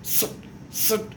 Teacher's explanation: स चा उच्चार झाल्याबरोबर त्याच्या पाठीमागं ती हवा मोकळी होते.